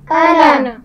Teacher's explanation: نون پر صرف زبر پڑھا جائے گا, اس کے بعد والے الف کو ہم نہیں پڑھیں گے